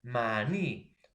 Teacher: la mayor fuerza de voz está en la última sílaba y termina en una vocal. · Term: aguda